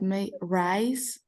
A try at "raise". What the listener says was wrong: Well, but you pronounce it raise. Yeah, you don't pronounce it rice. You pronounce raise. Rice is the first one.